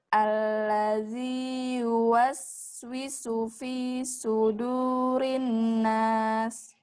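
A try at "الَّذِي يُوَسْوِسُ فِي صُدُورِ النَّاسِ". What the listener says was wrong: Lamakan nunnya, udah hampir sempurna. Sudurin nas. Nun gunnah, wajib al gunnah.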